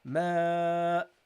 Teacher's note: And you have to prolong it because of the hamza. So whenever the hamza comes, guys, after a alif, you have to at least double the sound of the alif, or a little bit more